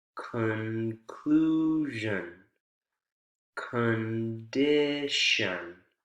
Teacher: notice how the vowels and the unstressed syllables are reduced to that schah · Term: schwa